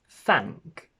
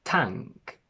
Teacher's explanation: The first variation is to go from th to t, where the tongue goes inside your mouth against your alveolar ridge, and it's voiceless.